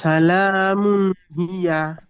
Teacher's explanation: হিয়াটি টান হয়ে যাচ্ছে, ইয়ার উপরে জাবার আছে, টান হবে না।